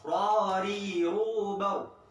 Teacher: Ro-nya ada, pantulannya sedikit. Ingat, ro sama ro-nya tebel, ri-nya tipis.